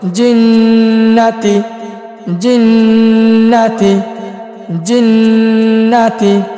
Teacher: নুনে বা মিমে তাসদীদ থাকিলে ওয়াজিবে গুন্না